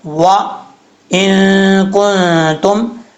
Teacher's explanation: نون ساکن کے بعد کاف آ رہا ہے حروف اخفاء میں سے، تو یہاں پہ نون ساکن کا اخفاء ہوگا